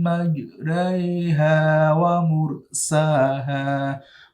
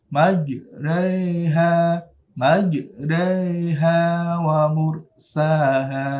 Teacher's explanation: Seperti itu contoh dari imalah, mencondongkan alif ke kasroh